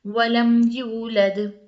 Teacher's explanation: بالکل ناک میں آواز نہیں لے جائیں گے، زیادہ رکیں گے نہیں، صرف میم ادا کر کے اگلا ورڈ، اگلا جو حرف ہے وہ پڑھیں گے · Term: اظہار